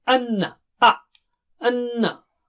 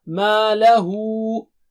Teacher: Gunna is there on noon. Double stretch nasal sound.